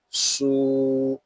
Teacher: صاد یہ حروف مستعلیہ میں سے ہے، اس کو پور یعنی موٹا پڑھیں گے